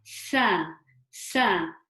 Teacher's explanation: the seen is the tip of the tongue touching the tips of my lower teeth. So I would say it like sa, sa.